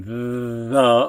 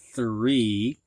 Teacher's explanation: TH, which can be either voiced, like in the, or unvoiced, like in three